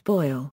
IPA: ˈbɔɪ̯l